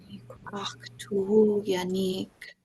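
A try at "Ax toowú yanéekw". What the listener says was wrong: Make sure that you round your ending. So a W in Tlingit tells us to round our lips. And you don't see this in English where there'll be a KW at the end of a word.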